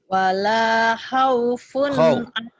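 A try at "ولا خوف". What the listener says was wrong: Khaw, jangan haw. Khaw.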